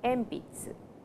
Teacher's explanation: P, the sound N changes to M